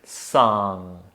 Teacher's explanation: There is a nice long ah, and notice that we don't end with G.